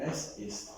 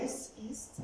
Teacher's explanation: and the word before ends with a consonant, you don't make a liaison. You don't do them together.